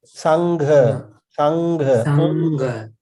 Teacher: When you pronounce nga, it is the back of the tongue that is popping up and touching the roof.